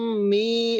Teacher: Tasdid ke mim, mimnya itu ketika ditahan 2 harokat.